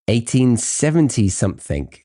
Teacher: he connects the E of 1870 right into the next word, which is something? It would feel odd to add a pause or disconnect between those.